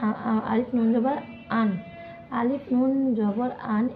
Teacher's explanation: এখানে নুন বর্ণের উচ্চারণের সময় নাকের গহ্বরে এসে থেমে গেছে